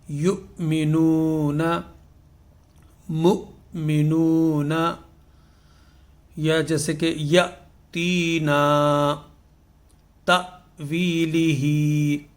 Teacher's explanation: حمزہ ساکن کو پڑھنے کے لیے ہمیں اس میں جھٹکا دینا پڑے گا